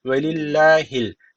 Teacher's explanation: Allah lafzı ince okunuyor Neden Çünkü alttan bağlanıyor niye alttan bağlanıyor Allah lafzın bir öncesindeki harf şu başındaki lam · ri burada ri diye okunuyor yani ince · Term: ri ince